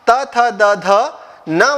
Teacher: जीभ जो है वो ऊपर के दांतों को स्पर्श करती है और फिर ध्वनियां बाहर निकलती है